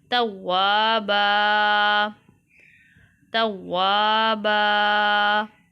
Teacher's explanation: اب یہاں پر آیت ہے، آیت کا وقف کریں گے تو با دو زبر بند کی بجائے ایک زبر پڑھیں گے اور ساتھ اس کو ایک الف جتنا لمبا کیا جائے گا